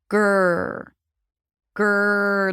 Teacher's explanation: the back of the tongue goes up to produce the G sound. You block the air in the back with voice. And then as you pronounce the G, the tongue goes up to the middle of the mouth preparing for the R sound. · You block the air in the back with voice. And then as you pronounce the G, the tongue goes up to the middle of the mouth preparing for the R sound. And you round the lips.